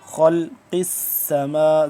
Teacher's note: ان فی خلق، خا موٹا کر کے پڑھیں گے، قاف بھی موٹا، آگے ضاد بھی موٹا۔ خلق السما، سین کو سیٹی کی آواز نکلے گی، سختی سے پڑھیں گے